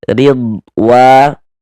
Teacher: Jangan dibaca ridwa gitu, jangan. Dia huruf dod ini bukan huruf qalqalah, jadi jangan mantul.